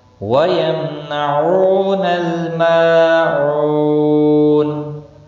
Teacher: او واو مدہ ہے، ایک الف کے برابر کھینچ کر پڑھیں گے، نون ساکن پڑھا جائے گا، وقف بالاسکان ہوگا وقف کی صورت میں۔